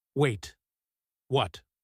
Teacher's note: rises sharply again, the universal sound of shocked concern, almost identical in shape to her earlier excited Wait.